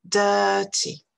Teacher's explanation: Vous remarquerez que quand on prononce cette consonne, on ne prononce pas, en anglais britannique, la lettre R. D'accord? C'est simplement une voyelle longue. Dirty. Si vous écoutez parler des Américains, vous aurez l'impression qu'il y a quand même un petit son R qui vient se placer avec la voyelle.